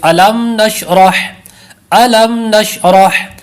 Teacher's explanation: اظہار شفوی کا قاعدہ ہے، غنہ نہیں کریں گے